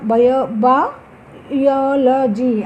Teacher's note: బయాలజీ అనే పదంలో లాజీ అనే సఫిక్స్కు ముందు యోకు ముందు స్ట్రెస్ తీసుకుంటుంది